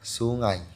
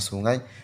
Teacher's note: Deretan huruf vokal itu melambangkan bunyi diftong ai yang merupakan inti suku kata ngai.